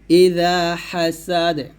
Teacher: নাই তো এখানে কিন্তু আবার টান দেওয়া যাবে না এখানে আমি দালটাকে ডাইরেক্ট সাকিন করে ফেলবো